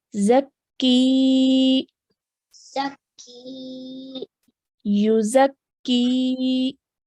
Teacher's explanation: Just like we did before, because there is a ya sakin and the letter before carries a kasra, this is now a ya madya. So we have to stretch that sound of ki for 2 counts